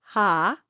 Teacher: H sound in front and you go ha, right, you can generate an easy onset. You don't do a glottal onset, a hard glottal onset of the sound.